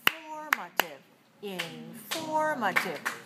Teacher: 4 syllables. Where's the stress? 2nd syllable, right, 4-2.